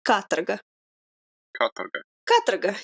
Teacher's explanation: the O is basically an A. It's like katarga. And the emphasis is on the first A.